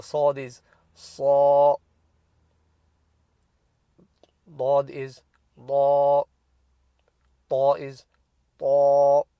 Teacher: with the full mouth letters it's not an R stretch, it becomes an A stretch